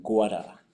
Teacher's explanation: And so basically the R just kind of falls off.